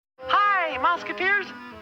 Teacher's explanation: was a high baritone voice, naturally, and he smoked, which brought his pitch down.